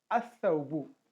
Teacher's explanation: Directly we will join alif with sa, with the sun letter. We drop the letter lam in pronunciation